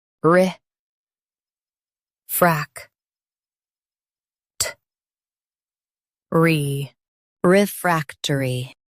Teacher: Emphasize frac and soften tury.